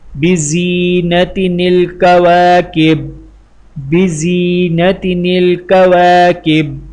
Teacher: ایک کلمے کے آخر میں تنوین ہو اور دوسرے کی شروع میں حمزہ وصل تو حمزہ وصل حذف ہوگا اور تنوین کے سبب پیدا ہونے والے نون کو کسرہ دیں گے